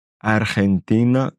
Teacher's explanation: Donc ici, c'est collé le R et le J. Ça fait arg, Argentina.